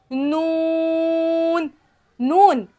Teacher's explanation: छह दांतों के मसूड़ों से लगे तो उससे नून अदा होगा